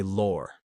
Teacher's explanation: It's all about that stretched awe sound. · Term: stretched aw sound